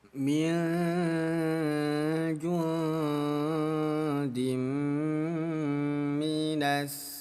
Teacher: Jadi bunyi nunnya kita samarkan selama 2 harokat. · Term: hukum ikhfa